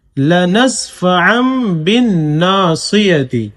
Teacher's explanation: لنسفعا بالنا، صاد زیر سی، یا زبر یا، تا زیر تی، بالناصیتی، لنسفعا بالناصیتی، اصل میں ہے لنسفعن، عین الف دو زبر عن. تو قاعدہ ہے کہ جب تنوین آ جائے اور اس کے بعد با آئے تو وہاں پر اقلاب کریں گے، یعنی اس تنوین کو میم سے بدل کر پڑھیں گے